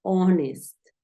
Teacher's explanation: una de esas palabras en las que la H no tiene sonido